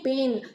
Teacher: 비음 앞에서는 모음이 자연스럽게 nasalization이 일어나는데요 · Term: nasalized 된 바울